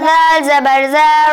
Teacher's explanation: ذال کو آپ نے زا کی ساؤنڈ کے ساتھ پڑھا ہے اور زا کو آپ نے ذال کے ساؤنڈ کے ساتھ پڑھا